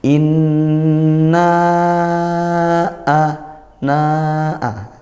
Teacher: baca riwayat hafaz thq sbiah maka panjangnya empat harakat seperti itu kita baca panjang dua Alif atau empat harakat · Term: Mad Jaiz munfasil